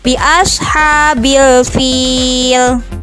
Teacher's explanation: Apabila alif sebelumnya berharokat fathah, ya mati sebelumnya berharokat kasroh, waw mati sebelumnya berharokat doma dalam keadaan waqaf, maka dibacanya harus panjang. Panjangnya sebanyak 6 harokat atau 3 alif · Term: mad arid lisukun